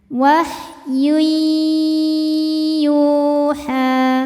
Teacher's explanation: Sebab ada tanwin dhammah yang dilihatnya tanwinnya ya, ketemu dengan huruf ya. Maka cara bacanya tanwin ini dimasukkan ke ya jadi wahyui sambil nahan sambil dengung ya. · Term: idgham bighunah, idgham bi gunnah